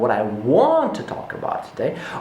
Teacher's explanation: you have all the words that are not stressed set together with the word that is stressed as one cluster